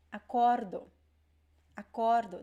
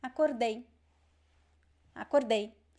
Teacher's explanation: present tense would be acordo. Acordo, the stress is in the middle. Past tense is acordei. Acordei, the stress is at the end. Okay, this is because of the two vowels at the end.